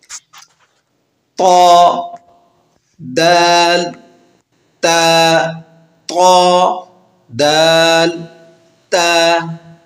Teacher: زبان کی نوک اور اوپر کے دانتوں کی جڑ سے ادا ہوتے ہیں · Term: حروف نطعیہ